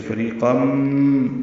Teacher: تنوین کے بعد میم آنے کی وجہ سے فریقم ادغام ہے. ادغام ناقص غنہ ہوگا.